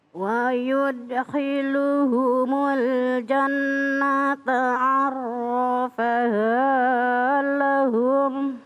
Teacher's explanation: kalau di sini wa yudkhiluhumul jannata, nun tasdid maka berdengung. Arrafa ditekan, arrafaha lahum.